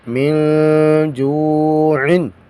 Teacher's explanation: جیم کے بعد واو ہے ساکن ہے حروف مدہ میں سے ہے، اس کو مدہ بھی کریں گے، لمبا کر کے پڑھیں گے. من جوعن.